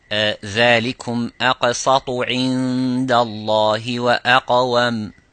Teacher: this is the qaf, is a heavy or full mouth